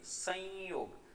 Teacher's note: જેમ કે આપણે આ શબ્દનું ઉચ્ચારણ કરીએ સંયોગ, ત્યારે આ રીતે આપણે એમનું ઉચ્ચારણ કરીએ છીએ. એટલે કે માથે અનુસ્વર છે આ એ અડધો ય ઉચ્ચારીએ છીએ